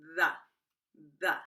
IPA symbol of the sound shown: ð